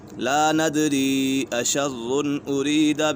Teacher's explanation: حروف مدہ کے بعد حمزہ دوسری کلمے میں ہے تو اسی وجہ سے مد منفصل ہوگا